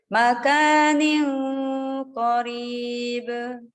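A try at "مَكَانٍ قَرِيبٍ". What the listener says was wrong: Oke, tapi dengungnya ditebalkan lagi. Makanin ko.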